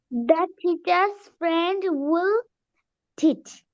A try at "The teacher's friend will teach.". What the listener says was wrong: good, মাশাআল্লাহ,